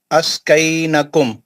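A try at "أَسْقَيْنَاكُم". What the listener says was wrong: ना नून पे खड़ा जबर है ना.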